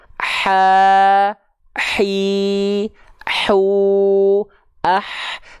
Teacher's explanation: H kecil ketika dilafalkan mengalir deraskan nafasnya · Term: hams